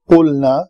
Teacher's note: قاف مضموم حرف ہے، مخرج اس کا لوتھڑا جو ہے وہ بالمقابل تالو کے ساتھ لگے۔ قلنا، اس کو ادا کرنے کے لیے تھوڑی محنت کرنی پڑتی ہے، یہاں پہ زور پڑتا ہے۔